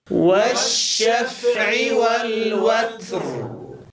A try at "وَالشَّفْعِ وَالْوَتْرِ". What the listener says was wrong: أسمع أيضا صوت سين مع همس التاء، لا نقول والوتر والوت، هذا الصوت المصاحب لهمس التاء غير صحيح. لا نقول وتسر، هذا خطأ. إنما نجعل اللسان حين نقرع مخرج التاء نجعل الهمس قرب مخرج التاء قبل أن ننزل اللسان إلى أسفل. هكذا يكون همس التاء.